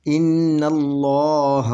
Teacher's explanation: پہلی لام جو ہے وہ زبر کے ساتھ پڑھیں گے، پہلی لام جو ہے زبر کے ساتھ پڑھیں گے، نل، اگلی لام جو ہے اس کو موٹا پڑھیں گے، پہلی لام سے دوسری لام جو ہے وہ موٹی پڑھیں گے، ان اللہ، اور اس کو کھینچ کر پڑھیں گے، دوسری لام کو 2 حرکت کے برابر اور موٹی پڑھیں گے، کیونکہ اس کے اوپر یہ کھڑی مد ہے۔